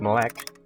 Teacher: For example, in the word melek, you can see there are 2 E's, but they are pronounced differently where the first E is sounding like a schwa sound while the second one is sounding clearer